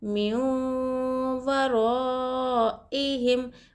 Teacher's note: मीम वौ ज़ेर मु, वाव ज़बर वा, मु वा, रा अलिफ़ ज़बर ऊपर मत, रा मु वा रा, हमज़ा ज़ेर आई, हा, मीम ज़ेर हिम, मु वा रा इहिम। चूंकि हम्ज़ा उसी शब्द में मद के बाद आता है, इसलिए यह मद मुत्तसिल है, और इसे चार अलिफ़ से बढ़ाया जाना चाहिए।